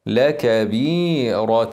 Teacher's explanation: هنكسر الباء ونفخم الراء لكبيره الفتحتين فوق بعض بالضبط علامه على الاظهار هنظهر نون التنوين